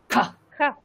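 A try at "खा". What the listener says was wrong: আপনার অধিক দম আসছে না, অধিক দম লাগান।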